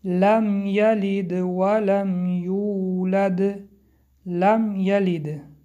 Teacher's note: حرف میم در اینجا اظهار شفوی می باشد که آن را روشن می خوانیم. یلد، یلد حرف دل با سکون آمده است، قلقله می باشد.